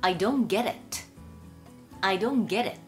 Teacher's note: get▁の▁T▁が弱い▁D▁になって▁get▁it